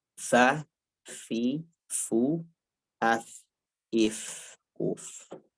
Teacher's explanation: perut bibir bawah ketemu atrafith thanayal musyrifah, yaitu ketemu dengan ujung gigi seri bagian atas. Al musyrifah itu maksudnya bagian atas. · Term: huruf fa